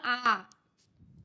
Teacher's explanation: आ इ उ या स्वरांचा उच्चार करण्यास अधिक वेळ लागतो त्यांचा उच्चार लांबट होतो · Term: दीर्घ स्वर